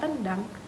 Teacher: bunyi nasal pada tendang diucapkan apikoalveolar karena bunyi yang mengikutinya yaitu huruf D. Perubahan bunyi nasal tersebut masih dalam lingkup alofon dari fonem yang sama.